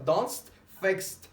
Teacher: we can pronounce D or ED at the end of our verbs as T.